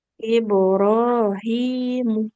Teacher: mimnya enggak panjang. Yang panjang H-nya